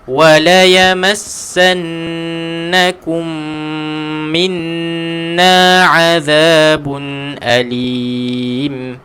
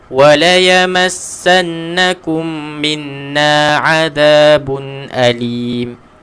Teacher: Huruf nun 1, 2, 3. Pastikan ada dengung semua